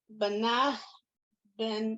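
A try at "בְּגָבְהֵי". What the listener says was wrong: No, that's a gimel. Read it again.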